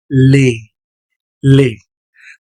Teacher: la pronunciación va a ser abierta como en español